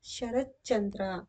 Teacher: ಬರುವುದಕ್ಕೆ ಚುತ್ವ ಸಂಧಿ ಎನ್ನುತ್ತೇವೆ ಉದಾಹರಣೆಗೆ ಶರತ್ ಪ್ಲಸ್ ಚಂದ್ರ ಶರತ್ ಚಂದ್ರ ಇದರಲ್ಲಿ ಪೂರ್ವ ಪದದಲ್ಲಿರುವ ತ ಬದಲಿಗೆ ಚ ವ್ಯಂಜನ ಬಂದಿದೆ